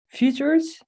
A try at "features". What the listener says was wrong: And in the first part, I hear just a little u, like futures. So try to just eliminate that u and make it just one straight e, like features. Features, only like one e.